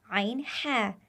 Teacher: गले के दरमियान से अदा होने वाले हरूफ दो है आईन हा जिसे वस्ते हलक कहा जाता है